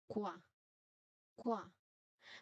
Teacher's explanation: the lips must move quickly from round to open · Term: glide